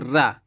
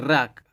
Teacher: मुख द्वार जीभ की नोक से शीर्घ ही बंद हो जाता है और 2-3 बार खुलता है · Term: लुंठित